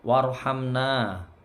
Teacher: Warhamna, 2 harokat panjangnya, roknya tebal. Ya, ham ini nggak boleh dengung, ini mim sukun ketemu nun, ini bacaan idhar syafawi.